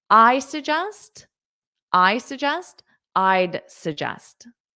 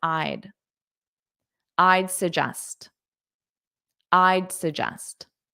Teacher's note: So when you say it as a sentence I'd suggest you really don't hear that D at all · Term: contraction